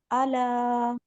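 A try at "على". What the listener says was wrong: आइन का मखरज सही अदा करिए। अला, अलग से, अलग से थोड़ा सा।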